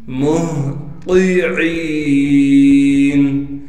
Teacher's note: مہطعین، میم کو ہا ساکن سے ملا دیں گے اس لیے کہ ہا ساکن ہے۔ ہا کو صاف کر کے گلے سے نکالیں گے، گلے کا وہ حصہ جو سینے کی جانب ہے